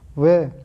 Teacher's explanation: व्यंजन के उच्चारण में इसमें दांत और निचला ओष्ठ प्रयोग होता है। ऊष्म या संघर्षी व्यंजन।